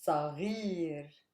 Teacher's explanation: Stress lies on gir, super heavy.